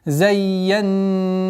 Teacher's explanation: У удвоения я нету назализации, после которой идет назализированный нун. В размере двух огласовок удерживаем назализацию.